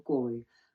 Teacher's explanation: your low rising 我, mid rising 好, and then flat 攰. The sixth tone, the low tone 攰.